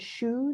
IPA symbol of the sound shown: u